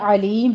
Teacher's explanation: عین ہے، وسط حلق سے ادا کرنا ہے۔ آگے ہم میم کے اوپر جو ہے وقف حذف کر رہے ہیں، وقف بالسکون بھی کہتے ہیں اس کو، یعنی ہم نے حرکت کو حذف کرنا ہے ضمتین کو، تو یہاں پہ مدارس وقفی ہوگی جس کو ہم نے 6 کاؤنٹ کرنا ہے۔